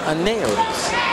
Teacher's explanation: There's an L sound that comes out from the EU because his name is spelled A-N-E-U-D-I.